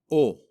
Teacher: the letters o and u are not rounded in spanish as they are in english